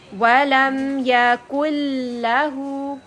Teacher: نون کو لام کے ساتھ مرج کر لیں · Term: ادغام